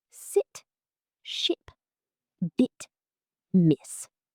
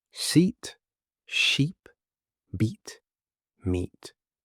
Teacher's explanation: Sit is short and relaxed. Seat is higher, tighter, and longer.